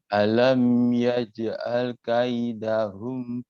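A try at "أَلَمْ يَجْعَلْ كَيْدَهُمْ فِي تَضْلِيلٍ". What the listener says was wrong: Masih sedikit terburu-buru. Yaj'al kaidahum. Nggak perlu takut dia akan berlebihan.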